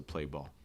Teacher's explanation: I know you see those ALLs, but this actually can have a dark L.